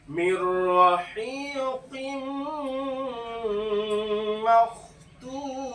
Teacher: ইদগামে নাকিস। প্রথমত কফ হরফে মুস্তালিয়া মোটা করে পড়তে হবে, কফজের কুই, দুজের পরে মিমটা ইদগামে নাকিসের অক্ষর, যার জন্য এক জের বাদ দিয়ে দিব, আর বাকি এক জের মিমের সঙ্গে যুক্ত করব এবং এক আলিফ পরিমাণ গুণনা সহকারে করব।